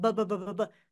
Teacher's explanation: B is in baby or Bianca if you feel your throat bbbbb that is voiced